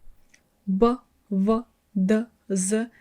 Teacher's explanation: when I pronounce these hard consonants, my tongue is near my lower teeth